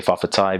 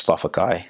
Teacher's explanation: understanding that the T's and K's are interchangeable